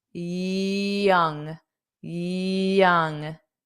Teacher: This is where I often hear Spanish speakers add a J sound to this word specifically.